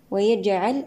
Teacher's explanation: الجيم هنا ساكنة شديدا فك شديدها بالقلقلة